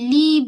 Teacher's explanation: huruf lam tepi hujung lidah menyentuh pada gusi kacip atas